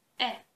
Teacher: the articulation of this sound um is a relatively the same from the beginning till the end